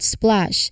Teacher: This combines the S sound followed by P, then L, all in one smooth sequence.